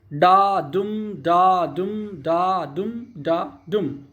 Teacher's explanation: Iambic pentameter में 5 syllable के जोड़े होते हैं, मतलब 10 सिलेबल होते हैं। पहला अनस्ट्रेस होता है, दूसरा स्ट्रेस होता है